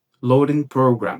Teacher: É como se esse D aqui, ele perdesse o som de D e ficasse como se fosse com o som do nosso R fraco aqui no português.